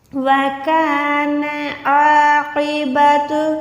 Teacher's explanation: عین کو حلق کے درمیان سے نکالیں گے، قوف کو موٹا رکھیں گے۔ عاقبۃ امرها یہ والی ہا جو ہوتی ہے حلق کے نیچے والے حصے سے ہوتی ہے، ایک ہوتی ہے ہا حلوے والی، یہ والی ہا ہوتی ہے حلق کے نیچے والے حصے سے۔